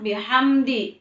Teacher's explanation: mim sukun berhadapan dengan huruf Dal jadi bacanya harus jelas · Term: izhar syafawi